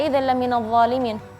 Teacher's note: Huruf dha dari segi makhraj sudah tepat, tapi karena terlalu ditekan makhraj dha-nya, jadi keluar angin yang tidak enak. Dha itu karena berlebihan ditekan lidahnya.